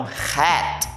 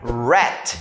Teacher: R, e agora sim, a diferença entre o R arranhado em inglês, like house, e o R, e o H, o H que é arranhado em inglês, e eu tenho o R que é R embolado no inglês